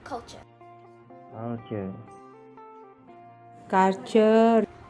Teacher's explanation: in Iban English, the word culture is often pronounced that way, where we can see a longer vowel sound in the first syllable